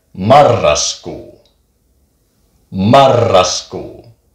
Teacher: It's a little bit longer. You just roll the R's just for a tiny second longer than if it was just one letter.